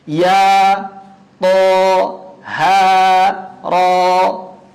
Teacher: lafal hayyun thahir atau hayya thahara kita baca semuanya 2 harokat, tidak ada yang lebih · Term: mad tabi'i harfi